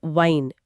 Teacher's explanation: जैसे एक शब्द है वाइन वी I N E यानी बेल और दूसरा है वाइन W I N E यानी पीने वाली वाइन। तो जब वी वाला वाइन बोलते हैं तो दांत और होंठ मिलते हैं और डब्लू वाले में हंठ गोल होते हैं।